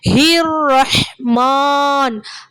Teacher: அந்த ஹா வந்து தொண்டையுடைய அடிப்பாகத்துல இருந்து அந்த ஹா சவுண்ட் நமக்கு வெளியாகணும்.